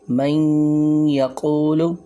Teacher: اسی طرح چار جو اور حروف ہیں یا، نون، میم، واو، ان میں غنہ کے ساتھ ہوگا، جیسے کہ من یقول، اب یہاں نون ساکن تھا، ہم نے میم کو یا کے ساتھ ملایا تو اس میں ہم نے غنہ کے ساتھ ادغام کیا ہے، ایک الف کے برابر غنہ کیا، ناک میں آواز کو لے گئے